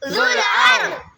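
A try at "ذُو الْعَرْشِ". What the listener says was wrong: ذال کے ساتھ جو واو ہے اسے نہیں پڑھیں گے ذال کو لام کے ساتھ ملائیں گے عین را زبر عر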